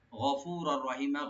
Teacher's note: আর রার উপরে যে তানবিন আছে, তানবিনের পরে যেহেতু রা আসছে এখানে একদম হবে, কিন্তু গুন্না ছাড়া, উইদাউট গুন্না। গফুরার রহিমা, মিমটাকে একেবারে টেনে ছেড়ে দেবো ইনশাআল্লাহ, মাধ্যমে আওয়াজ হয়ে যাবে।